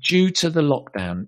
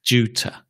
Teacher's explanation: The to becomes ta because it's not stressed.